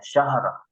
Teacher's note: ro-nya tidak terdengar ya